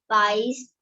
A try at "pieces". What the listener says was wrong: Pieces, not pies, pieces.